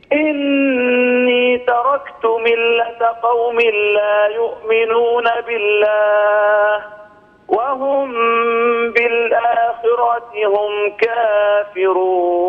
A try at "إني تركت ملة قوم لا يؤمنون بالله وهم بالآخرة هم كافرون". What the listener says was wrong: لي ملاحظة واحدة على الكسرة، لابد أن نتم الكسرة. كيف نتم الكسرة؟ نتمها بخفض الفك السفلي ورفع وسط اللسان. مثلا فيه، هكذا ننطق الكسرة ولا نقول فيه، هذه ليست كسرة صحيحة. ثم بدا لهم من بعد ما رأوا الآيات ليسجننه حتى حين، ولا نقول ليسجننه حتى حين، هذه كسرة غير صحيحة.